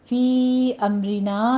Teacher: فی امرنا میں یا کے اوپر آپ دیکھیے مد منفصل جائز ہے، 4 کاؤنٹ کرنا ہے۔ امرنا میں میم ساکن کا قاعدہ اظہار شفی ہے، آگے رو مرقق پڑھی جائے گی، نا میں پھر الف مدہ ہے۔